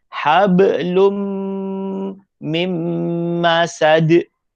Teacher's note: dia dommatain tapi kalau general dia tanwin Sebab Dia baris dua tanwin bertemu dengan mim maka masuk kepada mim kemudian dengung